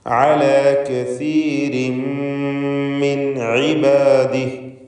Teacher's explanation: തൻവീനിനെ പൂർണ്ണമായി മീമിലേക്ക് ലയിപ്പിച്ച് മണിക്കണം.